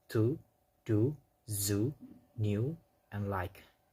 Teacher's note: This is the ridge area between the upper teeth and the hard palate or behind teeth. Produced with the tongue tip on or near the tooth ridge. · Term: alveolar